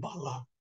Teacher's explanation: বালা বলে একটু এক আলিফ লম্বা করি, এবং এই যে আলিফের উচ্চারণ, এই আলিফের উচ্চারণ হচ্ছে আলিফ মাকসুরা।